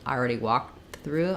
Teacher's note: I can swallow that KT and I'm not really saying it.